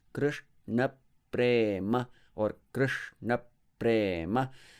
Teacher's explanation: even though the vowels are short, except A in Prema, all other vowels are short, the syllables are heavy. They are long syllables. But again, to repeat myself, I don't prolong the short vowels.